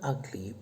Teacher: begins with the letter u but the pronunciation is ah